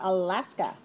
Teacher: 3 syllables. Stress the second.